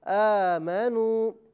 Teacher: اسے ایک الف یعنی 2 حرکت کی مقدار کھینچ کر پڑھا جائے گا۔ آمنو، حمزہ کھڑا زبر آ، میم زبر ما، نون واو پیش نو آمنو یہ واو مدہ ہے، اسے ایک الف یعنی 2 حرکت کی مقدار کھینچ کر پڑھا جائے گا۔